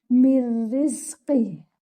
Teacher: So the noon completely merges into the ra. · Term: idgham bi ghayri gunna